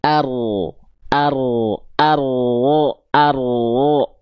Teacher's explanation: jadi si ujung lidahnya nggak nempel, yang nempel punggung lidahnya